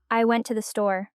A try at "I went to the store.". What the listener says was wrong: Now try to emphasize went and store a bit more, like this. That's the rhythm of English.